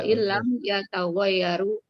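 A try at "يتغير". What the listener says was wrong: Yataghayyar, akhirnya sukun.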